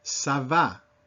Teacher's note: This is a pretty open A sound.